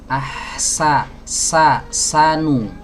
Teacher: ketika kita mengucapkan huruf Sin satu hal yang perlu diperhatikan adalah desisnya yang terdengar tajam